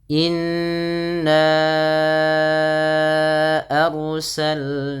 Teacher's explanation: ditahan bunyi suara nnya dipanjangkan dua harakat karena ia terdapat bacaan ghunah · Arusalna rnya ditebalkan karena ada huruf ro yang sukun didahului dengan fathah. Maka rnya menjadi ro yang tafhim yaitu ro yang dibaca dengan tebal. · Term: gunnah